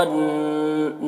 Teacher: وَعْلَمُوا أَنَّ نون مشدد ہے، نون میں غنہ کریں گے